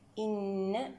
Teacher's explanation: إن نون هنا وجوب الغنة أكمل ما تكون.